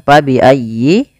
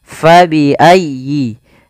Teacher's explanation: Fabi'ayyi. Di sini fa harus dialirkan, jangan sampai diganti dengan p. Jangan diganti dengan pa bi ayyi.